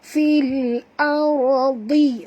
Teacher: huruf dad walaupun baris bawah tetap tebal